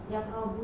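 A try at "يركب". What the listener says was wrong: Bukan yaqrabu tapi yarkabu. Yarkabu. Yarkabu, ya.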